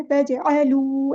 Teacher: वाव मद्दा आ गया तो अलिफ के बराबर लंबा करेंगे, तजअलू, इस तरह नहीं पढ़ना, जल्दी से नहीं पढ़ना, तजअलू ऐसे लंबा करना है, लिल्लाहि।